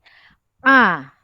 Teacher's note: Okey. Huruf A dia keluar dari tengah. Yang macam mau tercekik leher kalau cakap tu A. Kita agak tekan sedikit. A. Jadi dia keluar dari tengah kerongkong. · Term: Ain